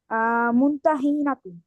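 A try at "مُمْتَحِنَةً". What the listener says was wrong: মুমতাহিনাতু হবে কেন? মুমতাহিনাতা। হ্যাঁ, আরিফু মুমতাহিনাতা।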